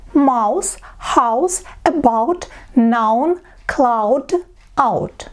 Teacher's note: Ау. Легкий, где первый звук А произносится, а У как будто потеряется. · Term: дифтонг